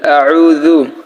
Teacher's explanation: জাল কিন্তু আমাদের অবশ্যই নরম করতে হবে। সো এটা যদি শক্ত হয় জু হয় তাহলে আমাদের হরফ উচ্চারণ ভুল হবে